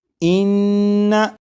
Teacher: नून मुशद्दद की अदायगी के वक्त ज़बान तालू से लगेगी